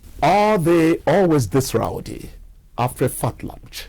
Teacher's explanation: there is a clear rise of the tone when are they was voiced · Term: rise and fall